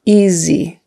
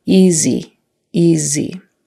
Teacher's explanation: to be her her tongue straight back the word easy easy that s in there is a z sound not an S sound